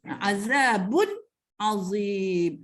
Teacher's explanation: Oleh kerana tanwin tu ada tersirat huruf nun mati di dalamnya, dia tetap aslilah dengung, tetapi tidak ketara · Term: izhar halqi